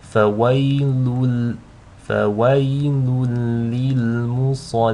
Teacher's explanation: The sad here is a heavy letter, so make sure you read that with tafkhim, with a full mouth.